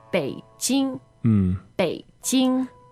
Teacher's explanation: b e i third tone j i n g first tone